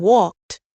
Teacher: in walked the ed sounds like t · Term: ed endings